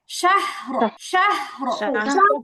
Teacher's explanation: পুরা স্পষ্ট র জবর র এর মধ্যে হবে না, জাস্ট রটা মোটা হবে, একটু উপরের দিকে ঠেলা মারবে, রটা মোটা হবে। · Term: র মোটা